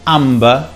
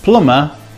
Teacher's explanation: amber we pronounce the b but plummer we don't